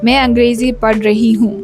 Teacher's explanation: the vibrations are kind of coming from inside like from the chest region